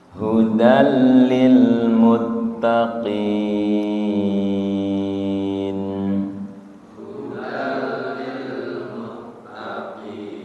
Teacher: Lil muttaqina, ketika diwaqaf menjadi lil muttaqin, panjangnya menjadi 6 kalau waqaf. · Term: mad arid lis sukun